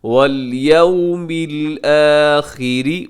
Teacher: یو میں واو لین ہے، اسے ہم نرمی سے پڑھیے گا، مجہول نہ پڑھیے گا